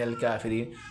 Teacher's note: کاف بریک ہے کشک والا، اس کو بریک پڑھنا ہے